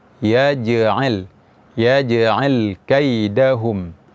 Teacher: Dan sifat qalqalah pada huruf jim ini, huruf jim bukanlah huruf yang berangin. Jadi jangan sampai kita mengucapkan huruf jim ini dengan keluar angin atau hamas.